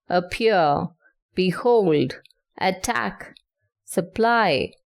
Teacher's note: consists of one unstressed syllable followed by a stressed syllable